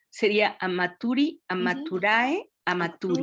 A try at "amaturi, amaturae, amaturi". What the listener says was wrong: Amaturae, muy bien, amaturi.